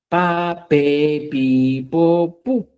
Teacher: El sonido se produce dónde? Entre el labio superior y el labio inferior.